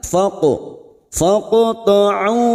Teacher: huruf qaf sukun yang mati asli di tengah kalimat qalqala sugra kita pantulkan